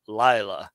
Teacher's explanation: notice this little accent here on the first syllable Lila not on the second syllable like it usually is · the accent retreated it's a recessive accent